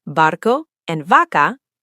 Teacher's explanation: Barco and vaca, the B and V sound identical. Both are somewhere between an English B and V. So English speakers try to pronounce the V in Spanish like an English V, teeth on lip, and it sounds off to native speakers.